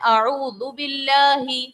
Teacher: زال نرمی والے حروف میں سے ہے. اعوذ باللہ, سیٹی نہیں نکلنی چاہیے